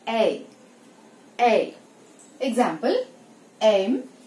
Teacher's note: ఏ sound ని pronounce చేసి immediate గా నెక్స్ట్ ఉన్న I సౌండ్ మీదకి ఫార్వర్డ్ అయిపోవాలి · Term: గ్లైడ్